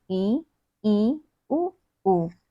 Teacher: जिन स्वरों के उच्चारण में मुख द्वार लगभग बंद रहता है, यानी कि बहुत ही कम खुलता है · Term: संवृत